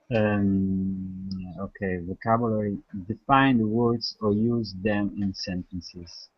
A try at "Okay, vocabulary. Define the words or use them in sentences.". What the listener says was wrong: Good. Great pronunciation.